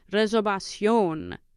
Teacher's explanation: The V is pronounced with your lips, with like a soft B.